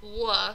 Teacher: our lips start rounded and then they slowly fall and that gives a sound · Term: glides